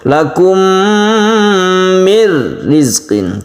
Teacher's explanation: La gunnah artinya tidak berdengung ya. Idgham bila gunnah, kita masukkan ke huruf ra, tasydid ra, nunnya menjadi hilang, tidak terbaca tapi tidak berdengung.